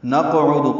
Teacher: نقعد قاف ساکن پہ قلقلہ ہے، عین دال معروف طریقے سے جلدی پڑھیں گے۔